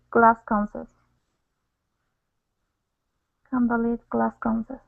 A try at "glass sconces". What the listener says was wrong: Yeah, so one sound. No need to stop and pronounce another S.